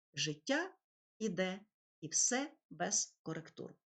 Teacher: повторюється дво складова стопа в якій йде перший склад ненаголошений а другий наголошений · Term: ямб